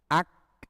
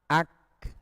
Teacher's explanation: akan dilafalkan dalam sifat syiddah tertahan dulu kemudian mahmusani Fi akhirima setelah tertahan baru keluar desis